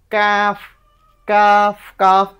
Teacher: জিহ্বার গোড়া থেকে একটু সামনে আগায় গিয়ে কাফ উচ্চারণ হবে